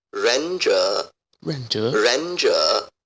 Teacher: They are both in the third tone. But when you put two third tones together in Mandarin Chinese, the first one becomes a second tone. So the actual reading will be Renja.